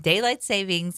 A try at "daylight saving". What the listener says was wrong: Saving, remember. The S is silent.